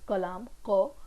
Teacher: Here this image doesn't have an label of uvula, but it is situated here. So the back of the tongue goes in the direction of that uvula and the sound is produced. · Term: uvular sound